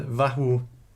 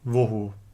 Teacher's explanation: a developed to o under the influence of a following u sound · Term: umlaut